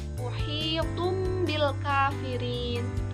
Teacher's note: Nah, di situ kan ada domatain yang bertemu dengan huruf ba. Jadi, dari bacaan tanwin itu ditukar menjadi mim sukun, muhitum bil kafirin. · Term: iklab